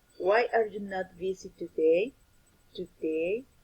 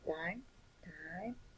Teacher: describes how the voice falls on the last syllable of the last word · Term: falling intonation